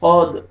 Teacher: دال ساکن ہے، دال قلقلہ، ڈبل ساؤنڈ آئے گا